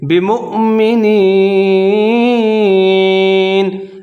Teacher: واو کے اوپر حمزہ ہے، اس کو جھٹکے کے ساتھ پڑھیں گے